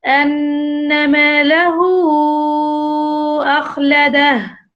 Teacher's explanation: So we called it مد صلة كبرى. That because it seems as المد المنفصل, and we read it with 4 counts.